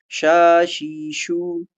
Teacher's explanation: شین باریک فاصلہ، تفشی، ہوا کا پھیلاؤ.